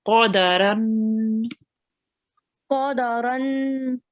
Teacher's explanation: So you rounded your mouth with the qa and the ra.